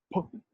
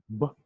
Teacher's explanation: Stop because when you produce the sound, p, there's a sudden stop. You don't say pa, it's p.